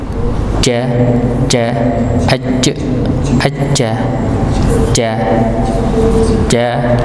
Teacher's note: Jadi kalau kita mengetahui huruf jim ini tempatnya adalah tengah lidah.